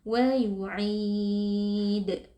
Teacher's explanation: Lalu karena huruf yang kita sukunkan adalah huruf dal, berlaku hukum qalqalah kubra, sehingga huruf dalnya kita beri pantulan suara